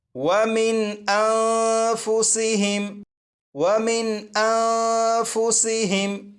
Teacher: یہاں پر دیکھیں یہ جو نون ساکن ہے، اس نون ساکن میں غنہ نہیں کریں گے، اور یہاں پر یہ جو نون ساکن ہے، اس نون ساکن پر اخفاء کے قاعدے کے مطابق غنہ کر کے پڑھیں گے